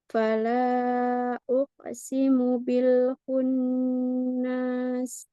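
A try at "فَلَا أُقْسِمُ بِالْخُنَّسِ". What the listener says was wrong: Tidak panjang. Lalu qalqalah qaf perbaiki. Sekarang qaf itu kan bunyinya ko gitu ya, Mi. Kalau dia memantul, maka dia akan kembali ke bunyinya.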